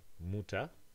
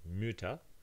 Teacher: from Mutter to Mütter, you change the U to its rounded form.